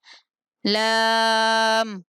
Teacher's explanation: زبان کا کنارہ کچھ حصہ حافہ اوپر والے دانتوں کے مسوڑے، لام کا مخرج ہے